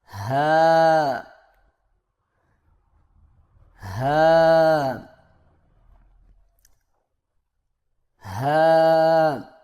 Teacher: زبان کی جڑ کو حلق کی طرف دبائے بغیر باریک اور بغیر رگڑ کھاتی سانس میں پڑھیں